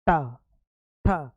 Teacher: तो जीभ जो हमारी है वो पलट के ऊपर लगती है और पूरे मुख में एक वाइब्रेशन होता है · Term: मूर्धा